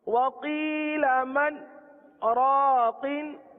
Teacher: मन के बाद आवाज रुक गई, हमने सांस ना लिया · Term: सत्ता